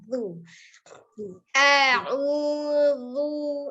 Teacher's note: Jadi tidak alu, tidak ditarik alu karena sebelumnya sukun waw itu juga monyong ya dengan memajukan kedua bibir kecuali sukunnya huruf yang lain kembali dia posisinya seperti semula. Zalnya ujung lidahnya ada di ujung gigi seri atas. Zu. Ya jadi tidak ditekan zu karena huruf zal dia sifatnya rogoa nanti kalau kita sudah belajar ya.